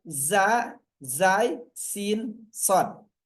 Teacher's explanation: Sin zai sin shad ini keluar dari ujung lidah mendekati gigi seri bawah. Mendekati gigi seri bawah.